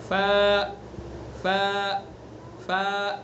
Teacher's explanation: ف زبان کی ثناء علیہ کا کنارہ اور نیچے کے ہونٹ کا تری والا حصہ